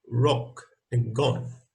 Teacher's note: It's low, but with slightly rounded lips, as in the words want, rock, and gone.